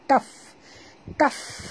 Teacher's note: bila dimati, bunyikan hamasnya